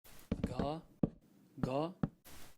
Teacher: they have a vocalized aspirated velar plosive